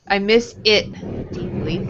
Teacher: if you have a T at the end of the word, it's not going to be a T sound or a D sound. It will be more in the back.